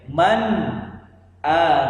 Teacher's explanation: nun sukun tidak samar-samar atau tidak dimasukkan tetapi betul-betul terdengar dengan jelas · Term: izhar